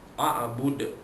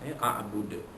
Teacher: Kalau kita matikan, wakafkan, jadilah dal itu qalqalah kubra, kalimah di hujung, kalimah hujung ayat, dibaca lantunannya tebal ataupun besar.